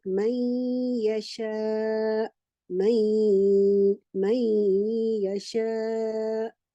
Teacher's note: noon sakina is merged in the letter following it, and this again changes its articulation point from the tip of the tongue to the articulation point of it, of the letter it is merged, like may yasha, may yasha. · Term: idgham